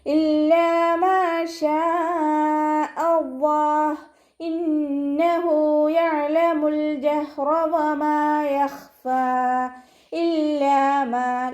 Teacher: ലാമിന് ശബ്ദ വന്നു 2 ഹർഫുകൾ ഉച്ചരിക്കുന്ന കനം കൊടുക്കുക. അലിഫ് മദ് കൂടെ വന്നിട്ടുണ്ട് 2 കൗണ്ട് നീട്ടിക്കൊടുക്കുക.